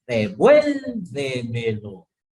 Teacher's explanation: sobre esdrújula son todas aquellas palabras que poseen su acento en la anterior a la antepenúltima sílaba